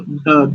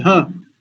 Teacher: एक अल्प प्राण वाला है और दूसरा महाप्राण है